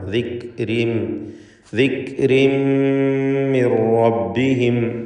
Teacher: തൻവീനിന് ശേഷമുള്ള മീമിൽ പൂർണ്ണമായും ലയിപ്പിച്ച് ഇദ്ഗാം ബിഗുന്ന ചെയ്ത് ഉച്ചരിക്കുക.